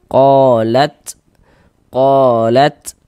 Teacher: Jadi ada nafas yang mengalir ketika kita mengucapkannya. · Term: sifat hamas